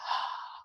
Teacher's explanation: vocal chords uh vibrate while remaining apart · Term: breathiness